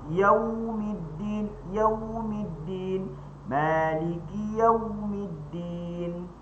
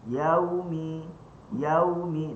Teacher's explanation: Maka au, yau, cukup kita istidaratul fam. Istidaratul fam, kita bulatkan mulut saja. Maka cara bacanya adalah yaumi, yaumi.